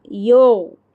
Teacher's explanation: غین کا جو مخرج ہے حلق کے آخری اوپر والے حصے سے غین وہاں پہ آواز آ کے رک جانا, وہاں پہ ہی آواز آپ کی.